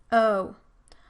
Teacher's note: the tongue moves from a higher mid-back position toward a high back position. The lip rounding also does not change.